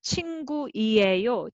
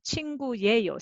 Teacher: 친구이에요 sounds like too many vowels side-by-side. So instead of 친구이에요, 친구예요 sounds more compact.